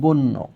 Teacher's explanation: শব্দের মধ্যে কিংবা শেষে যদি জফলা থাকে, তাহলে জফলাযুক্ত ব্যঞ্জন দুইবার উচ্চারিত হবে